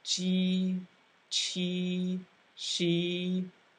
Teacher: Notice that when you say ji, chi, shi, e, the vowel sound sounds like e.